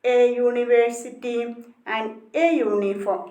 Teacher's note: in words such as university and uniform, the letter U is pronounced as YU. The pronunciation is YU. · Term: the Y sound